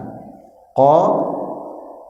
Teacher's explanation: Ini ada qof, pangkal lidah di sini ya. Pertemuan antara pangkal lidah dengan tenggorokan.